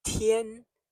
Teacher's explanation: it is first tone as I've said high and steady